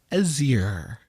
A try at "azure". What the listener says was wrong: You added like 3 syllables. I think it's azure, not azure.